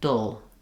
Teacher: the semivowel is its own syllable in this case. So you're basically going right from that flap to a sound. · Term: syllabic L